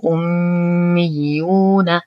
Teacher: نشد الميم بغنة أكمل ما تكون. نشد الياء مع إتمام الضم بعدها واو ساكنة فهو مد طبيعي. لا مد طبيعي حركتين.